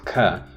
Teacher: when you have this plosive ka, the stricture happens between the back of the tongue and the velum.